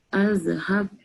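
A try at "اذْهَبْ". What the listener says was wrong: Kalau alif yang ada sod kecil, kan, dia ada dua je baris dia. Sama ada baris bawah atau baris depan. Dia tak ada baris atas. Yang ni izhab.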